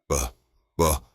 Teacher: Now, the B sound is completely different. For the B, your two lips press together firmly, stop the air, and then release it in a small puff. Buh, buh. There are no teeth involved.